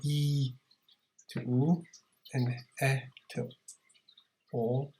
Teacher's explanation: So E to oo and to o, tongue moves back.